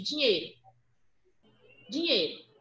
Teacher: Quando eu falo assim, ó, rapidamente, dinheiro, dinheiro, é como se esse E tivesse um circunflexo e não tivesse o I presente